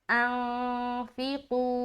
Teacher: यहाँ पर हम इख्फा कर रहे हैं। क्यों हम कर रहे हैं इख्फा? क्योंकि नून साकिन के बाद फा है اور ہمیں معلوم ہے کہ فا ہے جو ہے وہ حروف اخفا میں سے ایک ہے.